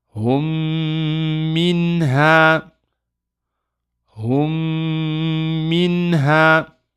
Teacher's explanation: you go from the hu straight to the meme with a shadda. Hold it for 2, pronounce the ghunna, and then release. So we will say, hummi, noon sukoon, min, ha.